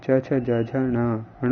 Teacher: च वर्ग का उच्चारण स्थान तालु